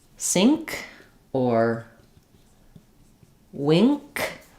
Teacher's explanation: For that k sound, you can feel the tongue is lifting more in the back, not behind the front of the teeth. Middle back of the mouth for wink and sink.